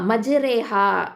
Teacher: மஜ்ரேஹா அப்படிங்கிறதுல உள்ள ராவை மெல்லினமாக படிக்கணும், மெல்லினமாக தான் ஓதணும்.